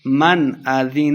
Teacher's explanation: من اذین اظہار کا قاعدہ ہے، یعنی بغیر غنہ کے پڑھیں گے